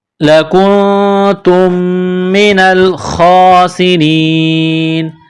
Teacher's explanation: جب یہاں سٹاپ کریں گے تو نون کو سائلنٹ کریں گے